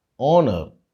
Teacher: The H at the beginning of the word is silent.